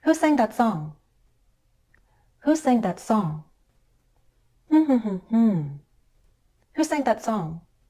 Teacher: now we'll Glide down on a single stressed syllable